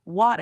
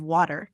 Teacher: British people drop their R sounds